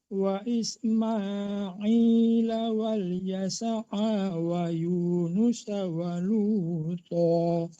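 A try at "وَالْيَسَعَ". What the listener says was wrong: Ya, cuman ainnya udah betul, tapi tertahan ya wal yasa'a wa Yunus wa Luta.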